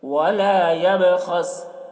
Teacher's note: وَلَا يَبْخَسْ، با میں قلقلہ کریں گے، با حروف قلقلہ میں سے ہے۔ خا کو پر پڑھیں گے، خا حروف مستعلیہ میں سے ہے